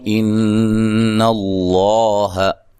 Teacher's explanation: نون مشدد پہ غنہ ضروری ہے. لفظ اللہ کو موٹا ادا کرنا، اس سے پہلے حرف پر زبر ہے.